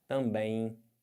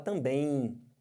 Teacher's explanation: Você, além de estar nasalizando o E, você tem esse M que vai ficar com som de I. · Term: Ditongo